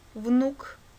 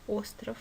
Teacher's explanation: буква в дает звонкий в внук или глухой в остров